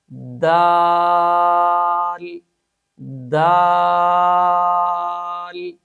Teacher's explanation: یاد رکھیں، حرف دال کا مخرج زبان کی نوک اور ثنایا علیا کی جڑیں ہیں، یعنی جب دال ادا کریں گے تو زبان کی نوک کو سامنے اوپر والے 2 دانتوں کی جڑوں اور مسوڑوں کے ساتھ لگا کر اس حرف کو ادا کریں گے